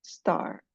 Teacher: Kalau t-nya di tengah-tengah kata kayak star itu tidak ada letupannya. Star atau less aspirated atau tidak ada letupannya.